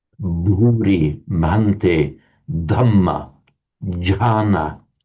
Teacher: But to make them aspirated bhuri mante dhamma jana instead of janna janna it doesn't come naturally to us in English because we don't have that phenomenon in in English the um voiced consonant aspirated. We can do it easily enough with the t but not with the the voiced forms.